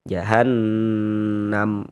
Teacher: Maka ini hukumnya gunnah musyaddadah, kita gunnahkan, kita dengungkan. Sehingga di bagian jahan, han, di bagian situnya itu kita tahan sejenak suara kita.